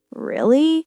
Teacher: If I say it with a rising tone, really, it's a question, showing surprise or disbelief. If I say it with a fall-rise tone, really, it might show skepticism.